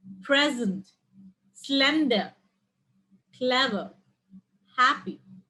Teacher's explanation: an adjective with two syllables stress on the first one so the noun and the adjectives would go the same way with the stress on the first syllable present slender clever happy so the first part is stressed and